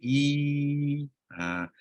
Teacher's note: Lidah berada dalam keadaan rehat untuk sebut jadi lidah kita kat bawah jelah. Tapi bila nak sebut ya mad pula, lidah tengah tu terangkat sikit